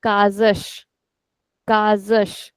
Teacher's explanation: whenever we make a plural there's an s at the end. So in that case the sound is sh. · the s that is coming in the middle of the word it is coming in between two vowels. So our rule says it is z whereas the last s is sh